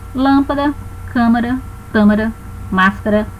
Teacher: proparoxítona a antepenúltima é acentuada